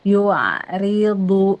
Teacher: Yua, dia teh tawasud ya. Si ainnya teh tawasud dan tipis.